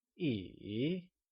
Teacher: can you try and say e it is said with a falling rising tone